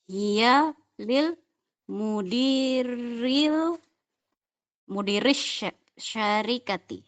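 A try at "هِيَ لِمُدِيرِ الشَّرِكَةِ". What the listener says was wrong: hiya li mudiris gitu Bu. Hiya li mudiris gitu. Syanya pendek.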